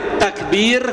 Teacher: Karena sebelumnya kasrah takbir maka ro getarannya akan lebih panjang. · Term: ro tipis